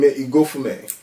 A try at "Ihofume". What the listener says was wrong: Ihofume. You don't pronounce the G.